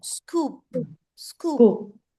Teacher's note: लिप पे जाके पा की साउंड स्टॉप हो जाएगी. प नहीं बोलना पूरा.